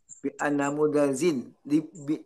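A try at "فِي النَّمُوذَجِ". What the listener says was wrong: Nggak pakai alif, inna langsung.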